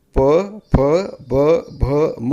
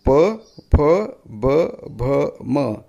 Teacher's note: ओठाला ओठ लावल्याशिवाय तुम्ही प फ ब भ म म्हणू शकत नाही. बघा, प्रयत्न करून पहा.